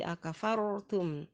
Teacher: Kemudian ro sukun didahului oleh huruf yang berharakat fathah, maka ro sukunnya itu hukumnya ro tafkhim, dibaca dengan tebal